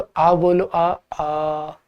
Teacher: अ और आ कंठ से बोले जाने वाली ध्वनियां है तो जब हम उन्हें बोलते हैं तो हमारा मुख एकदम खुल जाता है और कंठ एकदम साफ दिखाई देता